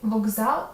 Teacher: В словах колесо мокрий і скупість к цілком чіткий, але в слові вокзал відбувається вже добре знайома тобі асиміляція за дзвінкістю. Г є дзвінким відповідником глухого К, який перед з ко от звінчується.